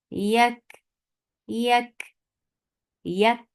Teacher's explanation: So first you are giving shidda, you are closing the makhraj, and then opening up the makhraj little. When the force behind crosses the makhraj, that is hams.